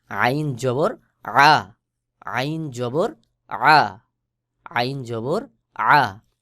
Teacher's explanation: আইনের উচ্চারণ ওই উপরের হার মতো, অর্থাৎ হলকের মধ্যখান হইতে আইন আর হা উচ্চারণ হয়। হলকের মধ্যখান থেকে একটু চাপ দিয়ে আইন উচ্চারণ করবেন, সহি উচ্চারণ হবে।